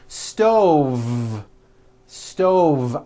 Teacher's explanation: I cooked dinner on a hot stove with a voiced V.